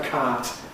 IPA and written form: kaːt (cart)